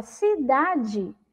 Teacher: a palavra cidade, ela é escrita com E lá no final, mas ela tem o som do I